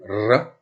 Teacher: Le R, qui s'appelle Don, c'est un R roulé, R, roulé. Hein, il est généralement roulé.